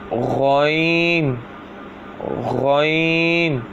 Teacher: غین بھی خا کی طرح حلق کے اوپر والے حصے سے ادا ہوتا ہے